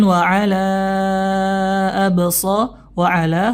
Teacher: hukumnya Mad Jaiz munfasil ya bertemunya Mad dengan Hamzah ya dalam dua kata dibaca empat dan 5